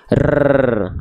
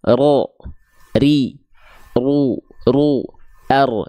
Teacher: getarannya sedikit tapi walaupun sedikit tetap getarannya tegas lugas dan jelas · takrir itu artinya dia bergetar dia bergetar tapi getarannya bukan dengan karakter yang berlebihan